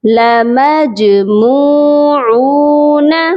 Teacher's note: لمجموعون، میم جیم زبر مج، جیم پر آواز کو ڈبل کریں گے، جیم پر قلقلہ کیا جائے گا